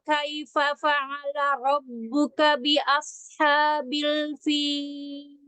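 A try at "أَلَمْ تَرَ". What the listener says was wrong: Alam taro. Ro-nya yang pertama dengan yang kedua disamakan. Sama-sama tebal. Ya, diulang ro-nya. Ayo, alam taro.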